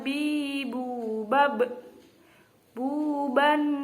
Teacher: yang kedua huruf Bab i ini terjadi maksudnya huruf Mbak itu kedua bibir atas dan bawah jadi bibir rapat